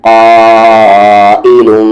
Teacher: حمزہ پر زیر ای، یہاں پر لو کو میم ملائیں گے لم. میم پہ تشدید آ گیا، غنہ ہوگا. آواز کو ناک میں رکھیں گے